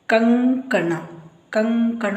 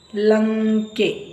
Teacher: ನಂತರ ಬಂದರೆ ಅದರ ಉಚ್ಚಾರ ಂಗ ಅಂತ ಬರುತ್ತೆ ಇದು ಕಂಠದಿಂದ ಬರುವಂತದ್ದು ನೋಡಿ ಕ ಖ ಗ ಘ ಈ ಅಕ್ಷರಗಳು ಸೊನ್ನೆಯ ನಂತರ ಇದ್ದರೆ ಅವಾಗ ಉಚ್ಚಾರ ಂಗ ಅಂತ ಆಗುತ್ತೆ